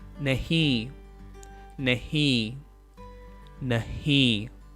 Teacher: We don't say the n at the end. We simply nasalize the vowel at the end. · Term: nasal sound